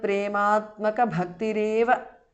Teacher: Tvat prematmaka bhaktihi is a compound word. Visarga changes to repha.